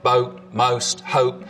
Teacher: Down in North Carolina, we really start to hear pretty significant goat fronting again. So the vowel sound in boat, most, hope starts with the tongue further forwards in the mouth